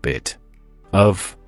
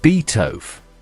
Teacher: The T links to the O. It doesn't sound like bit of. It sounds like bi-tof.